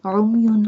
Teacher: Sound of ayn is a, and ayn pronounced from the middle part of throat